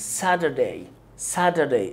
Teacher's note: والمقطع day بيكون unstressed، ما تضغطش عليه قوي وانت بتقوله. انت هتضغط على المقطع الاول، وهناخد الكلام ده واحنا بننطق الكلمات.